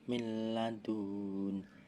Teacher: idgham bila guna sebab nun sukun bertemu lam bertasydid, membacanya masuk huruf lam ditahan